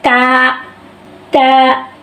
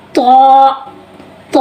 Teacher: تا کو ہم پڑھے ہیں باریک تا، تو کو ہم کیسے پڑھے ہیں؟ تو کو ہم موٹا پڑھے ہیں۔